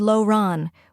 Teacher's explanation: Laurent is Laurent, with a soft, almost silent T at the end.